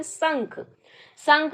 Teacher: जब बोलेंगे आप संख तो नाक से कुछ हवा निकलती है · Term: अनुस्वार